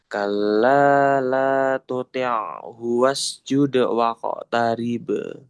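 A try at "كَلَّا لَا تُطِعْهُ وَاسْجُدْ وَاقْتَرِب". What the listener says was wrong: Dalnya jangan ada hamzah. Jude, jude, jude wa qatarib.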